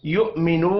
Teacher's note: یو، اب یہاں پر دیکھیں حمزہ بھی ہے، واو بھی ہے، اوپر حمزہ ہے اس لیے ہم حمزہ کو پڑھیں گے. یؤمنو، واو مدہ ہے، 1 الف کے برابر کھینچ کر پڑھیں گے، وف کی صورت میں نون ساکن پڑھا جائے گا.